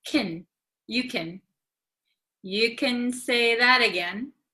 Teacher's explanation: So for like Americans, usually like can gets very short.